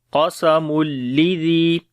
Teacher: حل فی ذالک قسم، القاف کو بھی موٹا پڑھیں گے اور تنوین کے بعد لام آ گیا تو یہاں پر ادغام بغیر غنہ کے کریں گے